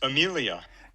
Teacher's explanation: that's a lo lo pattern that we typically get for declarative sentences · the F0 kind of goes down at the end, and it just bottoms out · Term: low-low pattern